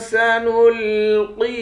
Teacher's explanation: قاف کو موٹا پڑھیں گے، یا کے ساتھ ملا کر اس کو بھی 1 الف کے مقدار کھینچیں گے، یا بھی حروف مدہ ہے۔